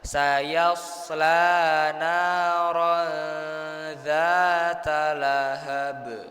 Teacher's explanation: Samar, dan samarnya itu kalau bisa jangan terlalu cepat ya. Kita tahan dulu sebentar. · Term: ikhfa